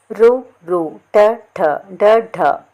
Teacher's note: ఠ డ ఢ ఈ అక్షరాలు పలికేటప్పుడు నాలుక కొన భాగంలో తగులుతుంది కదండీ అలా నాలుక కొనభాగం నుండి పుట్టినవి మూర్ధన్యములు